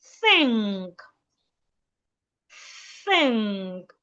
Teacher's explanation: an average Nigerian will pronounce the word THINK as tink, pronouncing the TH as a T. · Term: voiceless TH sound